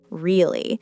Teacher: If I say it with a falling tone, really, it sounds like I'm agreeing or stating a fact.